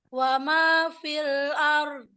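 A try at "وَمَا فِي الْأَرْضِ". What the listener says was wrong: Ditebalkan lagi dotnya ya. Wal ard. Wal ard.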